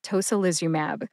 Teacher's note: Put that all together and you get tocilizumab. Emphasize toe and Liz. Liz gets the most emphasis.